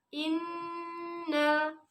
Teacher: ada nun bertasjid di sini sehingga harus ditahan 2 harokat dan dibaca ditekan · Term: gunnah